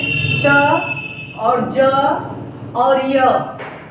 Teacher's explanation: ज और श और य तीनों वर्ण एक ही जगह से उच्चरित हो रहे हैं, तीनों का उच्चारण स्थान तालु है